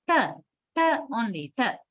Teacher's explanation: Non-aspirated term is t, t only, t. Non-aspirated, there's no puff of air. Okay, so that is another allophone.